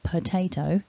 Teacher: the word is actually spelt with an O, but we have the schwa sound